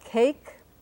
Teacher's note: you have two Ks. They're actually not identical. The first one is more breathy, or as we say in phonetics, aspirated. So you can put a little H here if you're doing a very narrow or detailed transcription.